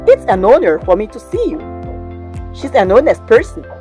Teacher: say an hour because h is unsounded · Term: unsounded age